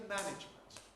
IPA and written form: ˈmænɪʤmənt (management)